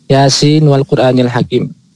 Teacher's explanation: Imam Hafiz yang kita ikuti bacaannya, beliau mengizharkan nunnya Yasin ketika ketemu wawunya wal Qur'anil Hakim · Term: izhar li riwayah